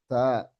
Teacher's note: Tempatnya ujung lidah ke gigi seri atas. Pangkal gigi seri atas.